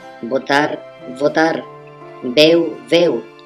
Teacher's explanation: una bona part dels parlants valencians i baleàrics oposen V i la B bilabial